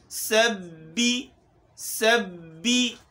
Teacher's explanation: سین میں سیٹی کی آواز پیدا کرنی ہے، با میں چونکہ تشدید بھی ہے، تشدید کو بھی پڑھا جائے اور با کو باریک پڑھا جائے۔